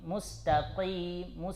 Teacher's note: Ketika huruf qaf kasrah dia tetap tebal, tidak kita bilang tipis. Tapi tingkat ketebalannya itu tingkat paling bawah, paling rendah, ya. Nah, al-mubalaghah itu seperti itu, mustaqi, ya.